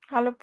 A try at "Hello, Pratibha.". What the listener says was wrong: Your just voice and everything should be full of excitement. अपने दोस्त से मिल रहे हो इतने दिनों बाद इतने डल क्यों लग रहे हो या proceed.